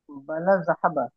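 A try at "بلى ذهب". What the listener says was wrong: বালা দাহাবা। এই যে বালা একটু টেনে করবেন, বালা দাহাবা, সে গিয়েছে।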